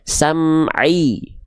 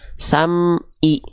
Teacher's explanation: Nah, maka ketika kita melafalkan huruf ain pastikan dia dilafalkan dari bagian tengah tenggorokan